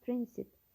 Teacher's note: Prinsip sözündə vurğu əvvəldədir.